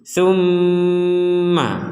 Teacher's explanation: Kita akan mengucapkan ma ketika dengungannya sudah sempurna. Summa. Kalau dengungan belum sempurna jangan bilang ma.